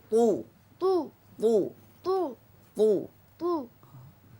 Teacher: এতবাকের সিফাত আছে এজন্য বেশি মোটা হবে